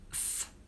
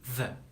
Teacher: the sound th is a voiceless consonant sound, and the sound the is a voiced consonant sound. If you want to practice, just put your finger in front of your mouth and try to touch it with your tongue.